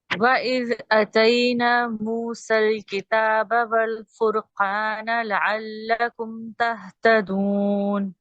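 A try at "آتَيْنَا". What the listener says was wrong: جی یہاں پر مارک کیجئے، آپ کا کبھی کبھی الف مدہ ڈراپ ہو رہا ہے. اتینا نہیں کریں گے. اتینا کچھ بھی ورڈ نہیں ہوتا. عربی کے الفاظ اگر ہم دیکھیں، اتینا دی ہم نے اس کو موسیٰ کو الکتاب کتاب.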